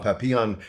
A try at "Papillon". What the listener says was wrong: Yeah, the emphasis on papi, but okay. Papillon works.